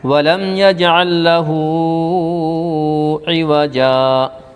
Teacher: جیم کے اوپر 2 زبر کی تنوین ہے، 2 زبر تنوین کو حالت وقف میں رکنے کے حالت میں ایک الف کے ساتھ پڑھیں گے